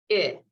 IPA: ɪ